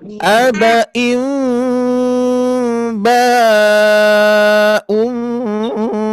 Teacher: sebelumnya ada mim sukun, maka kita harus dengungkan ya, kita samarkan dan dengungkan.